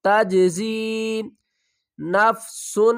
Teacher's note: جیم کے اوپر قلقلہ کریں گے